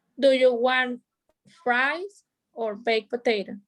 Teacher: be sure your voice goes up on the first choice down on the second choice